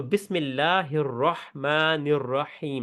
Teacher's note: اس میں اللہ کا لام پتلا ہے کیونکہ اس سے پہلے میم پہ زیر ہے